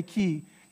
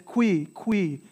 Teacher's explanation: that U I becomes that W sound